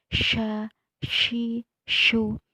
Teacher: Dalam sifatul huruf, shin ini tafashi, yang mana bermakna banyaknya angin yang keluar berhamburan. Maka sya, ketika membaca huruf sya, itu banyak angin yang keluar berhamburan.